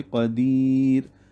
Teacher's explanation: اسی طرح قدیرن، رن میں را پر ہے، جب وقف کریں گے قدیر، را ساکن سے پہلے یا ساکنہ ہے جس کی وجہ سے را باریک پڑھی جائے گی وقفاً